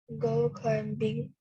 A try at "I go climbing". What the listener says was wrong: Yeah, I go climbing. Don't pronounce the D. I go climbing.